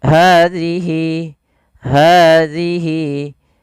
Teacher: Pada lafaz bacaan hadhihi, di sini pelafal ha ada hukum tajwid berupa mad tabi'i ditandai dengan adanya huruf ha yang berharakat fathah bertemu dengan alif. Panjangnya untuk ha adalah 2 harokat. Kemudian pada lafal hi, hadhihi, hadhihi.